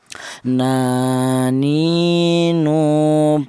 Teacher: huruf nun ini keluarnya huruf berasal dari ujung lidah menyentuh langit-langit mulut